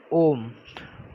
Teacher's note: प्लुत स्वर वे स्वर होते हैं जिनका उच्चारण करने में सर्वाधिक समय लगता है। जिनका उच्चारण करने में ह्रस्व स्वर से 3 गुना ज़्यादा समय लगता है।